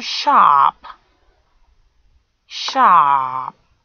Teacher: Sh, ah, a long monophthong, and gives you sharp